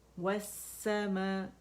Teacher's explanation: یہ لام اور حمزہ جو وصل ہے, حمزۃ الوصل, یہ دیکھیں یہ ڈراپ ہو جاتا ہے سمجھو پڑھنے میں, اور لام سین کی شکل میں پڑھا جا رہا ہے کیونکہ اس میں مرج ہو گیا, اس کا ادغام ہو گیا, ٹھیک ہے. · ہم جب یہ پڑھتے ہیں تو یہ لام اور حمزہ جو وصل ہے, حمزۃ الوصل, یہ دیکھیں یہ ڈراپ ہو جاتا ہے سمجھو پڑھنے میں, اور لام سین کی شکل میں پڑھا جا رہا ہے کیونکہ اس میں مرج ہو گیا, اس کا ادغام ہو گیا